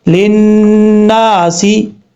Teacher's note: لام کو جب نون سے ملائیں گے تو بیچ میں یہ جو دوسرا لام ہے اس کو چھوڑ دیں گے، اور اب یہاں پر نون کے اوپر شد غنہ کریں گے، ایک الف کی مقدار۔